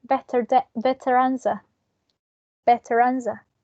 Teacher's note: because the following sound it's a vowel we are going to pronounce er the r sound at the end